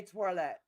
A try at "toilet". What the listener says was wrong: Toilet? There's no W in there.